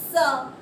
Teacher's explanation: जब हम स बोल रहे हैं तो हमारी जो जीभ है नीचे वाले दांतों के पीछे टच कर रही है। स, ऊपर नहीं आएगी जीभ।